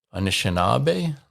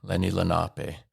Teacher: using an L where we'd use an N